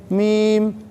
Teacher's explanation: لام میں کوئی مشکل نہیں ہے، تقریباً سارے بچے صحیح پڑھ لیتے ہیں. میم میم دونوں ہونٹوں کے ملنے سے ادا ہوتی ہے